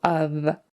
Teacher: it's spelled with an F on the end but we pronounce it with a V sound